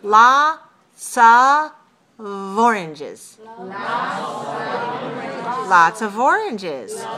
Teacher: the F, the spelling F, sounds like a V. So when we say the word of, it's voiced.